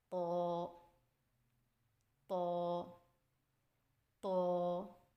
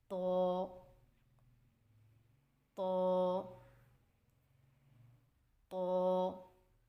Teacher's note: طا کی ادائیگی میں زبان کی نوک کو سامنے والے اوپر کے 2 دانتوں کی جڑ سے لگا کر اور زبان کے پچھلے حصے کو تالو کی طرف بلند کرتے ہوئے موٹی آواز میں پڑھیں